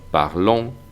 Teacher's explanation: sonará parlo parle parle parlon parl parla fijaros que nosotros parlon el acento va al final